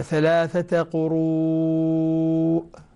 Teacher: حرف المد اللي هو الواو بعده همزة أيضا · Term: مد متصل